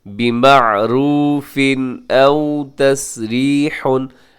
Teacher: आगे देखिएगा बिमअरूफ़िन, यहाँ पर तनवीन है आखिर में, यहाँ तनवीन है आखिर में, तनवीन के बाद हमज़ा है, और हमज़ा हरूफ़ हल्की के अंदर है, शामिल है, तो इसलिए यहाँ पर इज़हार होगा। बिमअरूफ़िन औ तस्रीहुन, औ यहाँ वाव लीन है, इसे अब मजहूल ना पड़ेगा।